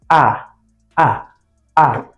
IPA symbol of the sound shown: æ